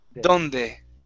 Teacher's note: when you pronounce that D, okay, your tongue touches the back of your teeth.